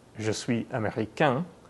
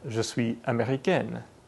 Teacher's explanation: The masculine version ends in a nasal vowel, je suis américain.